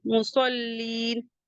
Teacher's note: جائے گا، تو فویل للمصلین، میم کو بھی جلدی پڑھیں گے، صاد حروف مستعلیہ سے ہے تو اس سے ہیوی پڑھیں گے